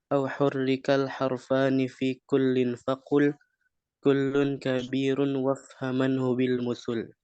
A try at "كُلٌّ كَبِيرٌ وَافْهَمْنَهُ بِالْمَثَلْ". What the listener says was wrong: كل كبير. Ranya tebal lagi. كل كبير وافهمنه بالمثل.